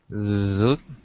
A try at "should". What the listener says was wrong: You've got to work on your SH.